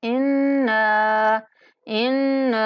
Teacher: نون پر غنہ کرتے ہوئے 1 الف تک کھینچیں گے